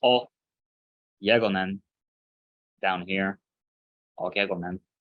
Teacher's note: But this first gamma, a gamma before an eh or an e sound, sounds like a y, kind of like a G-ish y sound